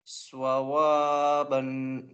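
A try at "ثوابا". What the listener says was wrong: Why swawa? Saw. Sawaban. Again, read the alif properly. The same way you do wa, you say ba. No difference. Sawaba. Sawaba.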